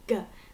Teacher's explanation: the third main place is at the back of our throat so if we say go that sound is made at the back